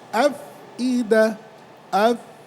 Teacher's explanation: উপরের দাঁতের আগা, নিচের ঠোঁটের পেট এবং বাতাস জারি, কারণ এটা কি মাহমুসার হরফ। মাহমুসার হরফ ফাহাসাহু শাখসুন সাকাত, একটু বাতাস জারি থাকে, আফ যেন মোটা না হয়।